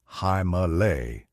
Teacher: in modern Hindi that final a sound disappears completely making it halay. · explained that in Sanskrit, the accent falls on the second syllable with a slight accent on the final soft A. But in modern Hindi, that final A sound disappears completely, making it Himalay.